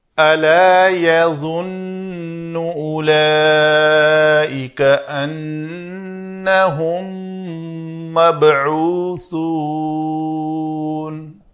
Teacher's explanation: سا کا مخرج سین میں نہیں لے جائیں گے، مبعوثون یہ سین بن جائے گی، تو اس کو سا رکھنے کے لیے نوکے لسان جو ہے یہاں دانتوں کے درمیان سامنے نظر آئے۔